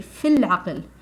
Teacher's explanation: So the long vowel is ignored. What is pronounced is the fa with a kasra under it. So it's a light kasra, fi.